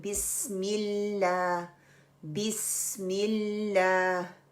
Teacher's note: लाम को पकड़ के रखना है। उसके ऊपर कलकला नहीं करना है। · लाइट लाम के लिए हमने जुबान का जो नोक है वो सिर्फ उठानी है और वो सामने वाली गम्स को लगानी है और जुबान पीछे से रिलैक्स रहेगी।